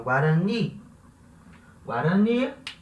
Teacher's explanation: a palavra termina em vogal, tá? E essa última sílaba é a sílaba tônica da palavra.